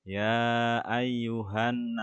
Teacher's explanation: seperti bacaan ini ya ayyuhanasu Ada Alif Mati sebelumnya harakat fathah maka dibaca Mad Thobi'i atau panjangnya dua harakat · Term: mat tobi'i